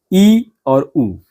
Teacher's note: संवृत का अर्थ होता है कम खुलना यानी कि मुंह कम खुले। तो जिन स्वरों के उच्चारण में मुख कम खुलता है उन्हें संवृत स्वर कहते हैं। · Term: समृद्ध स्वर